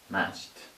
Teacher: Match. Ch, ch, ch. No vibration, so that is T.